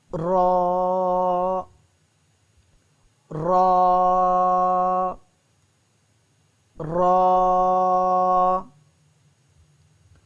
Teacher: زبان کے دونوں کنارے اوپر والی داروں سے لگے تو را ادا ہوتا ہے